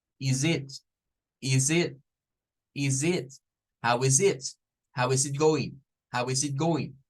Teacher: donde está el is con el it vengan y no lo vean como dos palabras separadas véanlo como una sola